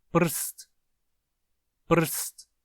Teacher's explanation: quando falamos prst, podemos, digamos assim, sentir que o som do r está no meio da sílaba. Ele é o som mais intenso, digamos, em volta dos quais os outros se organizam. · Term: núcleo da sílaba